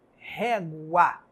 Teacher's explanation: Esse A, ele não se apaga como aquele I da palavra pai. Por isso você já sabe que esse A é a vogal.